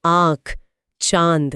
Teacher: अनुनासिक यानी चंद्रबिंदु में हवा नाक और मुंह दोनों से एक साथ निकलती है।